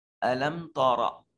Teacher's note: میم ساکن کے بعد نہ با ہے نہ میم ہے، کوئی اور حرف ہے، لہذا میم کو ظاہر کر کے پڑھیں گے اور اس کو اظہار شفوی کا نام دیا جائے گا۔